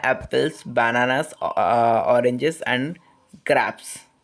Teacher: each item rise slightly with the final item falling